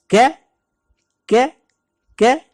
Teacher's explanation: زبان جہاں سے شروع ہوتی ہے وہ والا حصہ اوپر والے تالو کے ساتھ لگائیں گے تو یہاں سے ادا ہوگا ک یعنی باریک کاف.